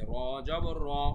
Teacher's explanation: র জবর রা কিন্তু হয়নি, আ করতে হয়নি, মুখটা করতে হচ্ছে অ